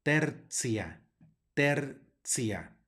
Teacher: en este caso la t suena como ts